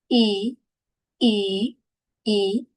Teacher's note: Voyelle fermé antérieur non arrondi. Tension musculaire maximale. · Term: le son I